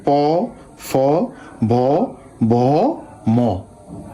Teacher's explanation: উষ্ঠ মানে হচ্ছে ঠোঁট। আমরা যে ধ্বনিগুলো উচ্চারণ করার জন্য ঠোঁটের ব্যবহার হয় এগুলো হচ্ছে উষ্ঠ বা দ্বিউষ্ঠ ধ্বনি